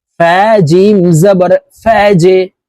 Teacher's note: জিম কলকলার হরফ নিচের দিকে ধাক্কা দিয়ে উচ্চারণ করতে হবে